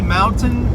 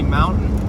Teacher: sometimes i say mountain and pronounce the t and sometimes i say mountain and do that glottal stop